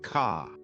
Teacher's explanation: British accent tends to soften the R. So car sounds more like ca.